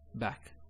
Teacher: when we say this sound, the sound, you'll notice your mouth is open, wide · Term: fatha